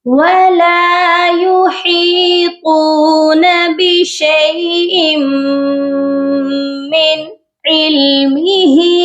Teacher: ہا کے ساتھ یائے مدہ ہے اور طا کے ساتھ واو مدہ ہے، اس لیے ہا کو بھی ہم نے کھینچنا ہے اور طا کو بھی ہم نے کھینچنا ہے. · اس والی نون ساکن پر ہم نے صرف اظہار کرنا ہے کیونکہ آگے حروف حلقی ہے عین